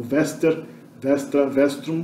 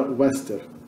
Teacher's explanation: esse U aqui já como V, porque eu uso a pronúncia italiana, mas no latim clássico era wester, pronunciado como W